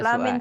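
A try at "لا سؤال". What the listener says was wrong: soal. La soal, bukan la min soal, tapi la soal.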